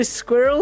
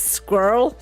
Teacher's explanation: squirrel has definitely two syllables when you say it in British English. Squirrel ends up with one syllable in many American accents.